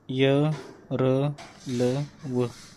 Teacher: थोडक्यात काय तर जिभेचा असा पूर्ण स्पर्श होत नाही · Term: अंतस्थ व्यंजन